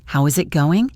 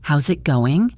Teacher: try it a little bit faster connecting how and is